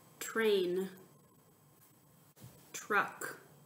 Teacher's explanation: can't forget about that TR blend T Archer which can actually sometimes confuse people because it sounds like the digraph CH but it's a TR